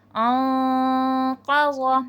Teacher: موٹا اخفا ہوگا، انقض، یعنی کہ آواز تھوڑی موٹی کر کے چھپے گی